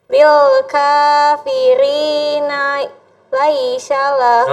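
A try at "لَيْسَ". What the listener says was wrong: Oh, Laisha. Kalau Laisha, kalau bedakan sa, kalau sa nggak ada titiknya. Kalau sya ada titiknya 3. Nah, jadi ini nggak pakai titik. Laisa. Lil kafirina laisa.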